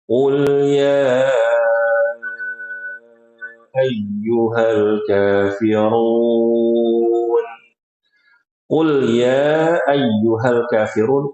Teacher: surah Alkafirun kalau menurut riwayat Syatibiyah, Bapak-bapak itu membaca mad jaiznya dengan empat harakat.